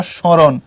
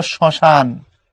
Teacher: পদের আদ্য ব্যঞ্জন মানে ম যুক্ত হলে উচ্চারিত হয় না, তবে সামান্য নাসিক্য প্রভাব হয়।